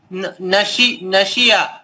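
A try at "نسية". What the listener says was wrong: نسیہ سینے نسیہ پیش کے پڑھے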